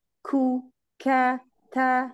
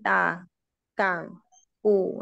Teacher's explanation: kaf ta ini huruf-huruf hames. Jadi meskipun dia tidak dalam keadaan sukun, hamesnya tetap keluar.